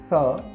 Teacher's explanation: यह एक वर्तस्य व्यंजन है, जिसके उच्चारण के समय जीभ मसूड़ों को स्पर्श करती है।